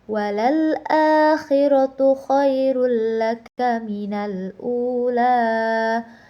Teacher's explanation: la itu dibaca 2 harokat karena berharokat alif panjang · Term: matobi'i alif